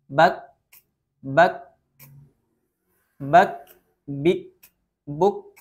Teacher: Jadi sifat syiddah dulu, baru sifat hamas setelahnya. Bak, bik, buk, dan ini khusus untuk huruf kaf ketika sukun atau wakaf.